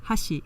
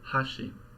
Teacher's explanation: Hashi, meaning chopsticks with an accent on the first mora. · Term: pitch accent